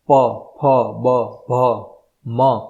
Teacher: આ વસ્તુ એવું છે કે જીભ તમારી ક્યાંય નહીં અડે, ફક્ત બે હોઠ ભેગા કરવાના છે. શબ્દ બોલશો ત્યારે ઓટોમેટિક હોઠ તમારા ખુલી જશે અને બહાર અવાજ આવશે. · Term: હોઠથી